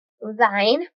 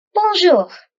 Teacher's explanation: these vowels are produced in the nasal cavity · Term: nasal wobbles